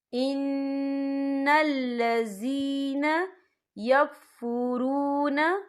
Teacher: یا ساکن ہے، یا ساکن سے پہلے زیر ہے، تو ہم یہاں 2 یا 3 حرکت کے برابر کھینچیں گے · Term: یا مدہ